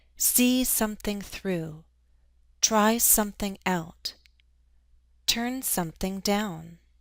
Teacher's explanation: We stress the verb and the first particle when an object separates a phrasal verb, and there's slightly more stress on the particle.